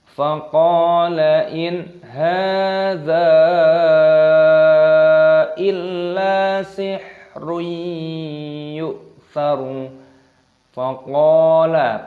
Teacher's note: panjangkan qafnya, ada tanda alifnya, mad tabi'i, panjangkan dua ketukan